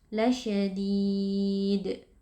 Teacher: Lalu karena terakhir di akhirnya itu adalah huruf dal yang kita sukunkan saat waqaf, maka berlaku hukum qalqalah kubra sehingga bunyi huruf dal sukunnya kita pantulkan.